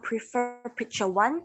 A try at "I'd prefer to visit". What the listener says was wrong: Okay, so again, you're not pronouncing the D, okay? So I'd prefer to visit. Yeah, you need to pronounce the D because that's the contraction of the verb would.